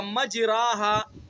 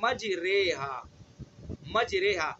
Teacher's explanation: زبر اور زیر کے درمیان، یعنی نہ تو اس کو زبر پڑھنا ہے، نہ تو الف پڑھنا ہے، نہ یا پڑھنا ہے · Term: الف ممالہ